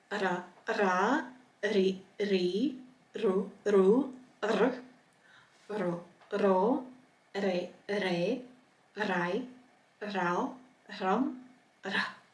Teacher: And this is more similar to the Spanish or Arabic ra. It's like almost a rolling trilled ra. So it's a hard R sound.